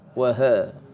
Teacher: pastikan ha tu bunyi dia di bawah sekali ya. Makhraj yang paling bawah sekali huruf ha.